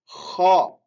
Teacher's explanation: Un petit rugissement et avec un son grave. Kha. Répétez avec la bouche ouverte.